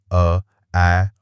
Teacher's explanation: अ को उदासीन स्वर या न्यूट्रल स्वर भी कहा जाता है क्योंकि इसमें जीभ बिल्कुल आराम की स्थिति में होती है। उसे कोई खास मेहनत नहीं करनी पड़ती।